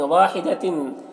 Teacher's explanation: تنوین کی آواز کو ناک میں چھپا کر پڑھیں گے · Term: اخفا